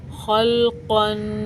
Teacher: क़ाफ़ भी पुर हरूफ है, इसको भी पुर पढ़ेंगे, मोटा पढ़ेंगे